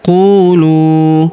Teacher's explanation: huruf u kita panjangkan 2 harokat karena terdapat waw sukun di depannya